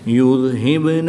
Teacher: با حروف کلکلہ میں سے ہے اور یہ ساکن ہے تو یہاں پر کلکلائے صغرا کر کے پڑھیں گے۔ کھڑی زبر کے بعد تا کی زیر کو وقف کی حالت میں ساکن کریں گے اور یہاں پر مد عارض ہوگی وقف کی حالت میں، تو یہاں پر بھی 2 سے 3 الف تک کھینچ کر پڑھیں گے۔